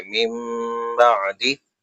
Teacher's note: نون ساکن کے بعد لیٹر با ہے تو اقلاب کا رول ہوگا، غنہ کریں گے